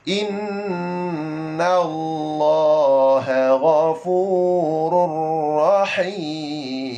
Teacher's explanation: Tanwin ataupun nun mati bertemu huruf ra dan lam idgham bila ghunnah. Masuk tanpa dengung.